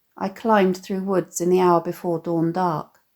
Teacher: the alliteration of the heavy, plosive /d/ sounds here creates a monotone feel